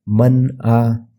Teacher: تو آپ غور کریں تو معلوم ہوتا کہ میں نون کو صاف ظاہر کر کے پڑھا، یہاں پر میں غنہ نہیں کرا، جیسے کہ من آ ایسا نہیں پڑھا میں، ٹھیک ہے، اور اخفا بھی نہیں کرا، من آ، ٹھیک ہے۔ تو ہم اس میں نون کی آواز کو ناک میں نہیں لے کر جانا اور کلیئرلی پڑھنا۔